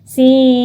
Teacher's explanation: Berarti dibaca dengung juga ya. Dibaca dengung dan ditahan. Jadi membacanya adalah sim gitu. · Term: idgham bi gunnah